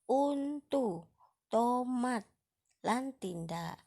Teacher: Pangucape aksara T kanthi pangatukake pucuk ilat ketemu pucuk untu